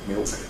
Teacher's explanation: the tongue tip doesn't articulate at all with the alveolar ridge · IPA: [mɪok]